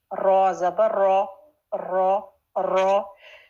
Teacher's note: रॉ के लिए जबान की जो टिप है वो अपने मखरज पर टच करके और फिर पूरी जबान पीछे से ऊपर उठ जाएगी और रॉ, लेकिन लिप सर्कल नहीं होंगे